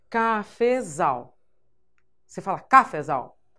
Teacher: Então, já deu para identificar que a sílaba tônica é a última.